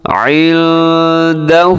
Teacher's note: من ذا الذی یشفع، یشفع پڑھنا صحیح نہیں ہے، یشفع عندہ، عندہ یہاں نون ہے، آئندہ میں نون ساکن کی بعد دال ہے، یہاں بھی اخفا ہوگا، یعنی کہ ناک میں آواز لے کے جانی ہے۔ عندہ الا بإذنہ، بإذنہ وقف کیا ہے تو بإذنہ آخر میں ہا کو ساکن کر کے پڑھنا ہے، بإذنہ ایسے نہیں پڑھنا۔